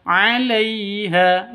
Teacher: lai sifat lin, lentur, lemes, tidak boleh disentak, tidak boleh dipanjangkan.